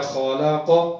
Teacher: خا حروف مستعلیہ یعنی موٹے جو حروف ہیں 7 ان میں سے ہے، اور قاف بھی حروف مستعلیہ یعنی موٹے حروف میں سے ہے، ان دونوں کو ہم نے موٹا کرنا ہے۔